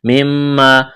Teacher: میم مشدد ہے, آواز ناک میں چھپائیں گے, غنہ کریں گے. الف مدہ ہے.